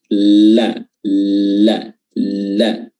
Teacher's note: A'la, huruf la, huruf lam, di makhrajnya adalah ujung lidah bertemu dengan langit-langit. Mulut bagian depan